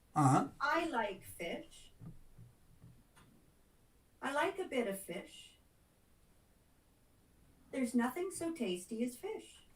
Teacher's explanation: the last one was a little bit longer but it it's not like three times or nearly three times as long as the first one